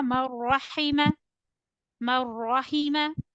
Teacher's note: So you need to connect mim with ra. Ra should be heavier. There will be no gunna. Marrahima. There is idgham over idgham bi ghayri gunna over ra.